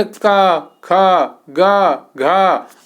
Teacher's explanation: आपको वहां पर थोड़ा आपको वो वजन महसूस होगा। जब आप का बोलेंगे, खा बोलेंगे तो थोड़ा आपको कंठ में प्रभाव महसूस होगा।